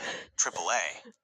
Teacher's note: This is a long, open vowel. Your jaw drops, and the airway is completely clear.